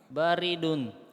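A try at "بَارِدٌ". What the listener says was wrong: Barid panjang.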